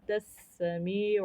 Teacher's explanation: اخفاء، سین ہمارا مشدد ہے، می پہ یا مدہ ہو رہا ہے یعنی یا ساکن سے پہلے زیر آ رہی ہے، تو یہاں پر یا مدہ ہوگا جسے ہمیں ایک الف کے برابر کھینچنا ہوتا ہے